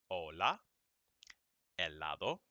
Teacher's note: the h is there but you don't pronounce it at the most it's like a little extra puff of air in your mouth but you don't say it